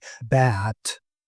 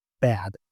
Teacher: in the word bat, the vowel is actually quite short. But in bad, it's lengthened. Right. And this is not just for those two words, but anytime you have like bit or bid, there's going to be a vowel of different length or back and bag. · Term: vowel adjustment